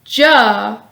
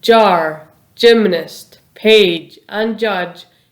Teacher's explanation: is voiced meaning your vocal cords vibrate when producing the sound the tip of your tongue starts at the roof of your mouth then moves down and the rest of your tongue stays at the lower part of your mouth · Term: sound ja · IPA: /j/